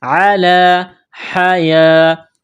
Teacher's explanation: زبر ہے، ایک الف کے لمٹ میں کھینچنا ہے، علی حیاہ، یا کے اوپر کڑا زبر ہے، ایک الف کے برابر کھینچیں گے